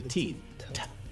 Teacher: ta, the tip of the tongue, is going against the back of the top of the teeth